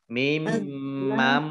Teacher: Azlamu mim mam. Nah, ini mimnya ada tasdidnya dibaca gunnah atau mendengung ditahan 2 harokat